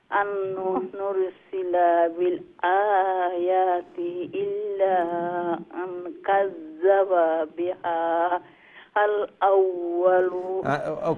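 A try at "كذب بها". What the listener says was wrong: কাযযাবা বিহা বিহা যে এই হাকে লামের সাথে জয়েন করতে হবে বুঝছেন এখানে হা লম্বা হবে না এইটা সরাসরি এই যে লাম সাকিন আসছে লাম সাকিনের সাথে জয়েন করতে হবে কাযযাবা বিহাল আউয়ালুন এরকম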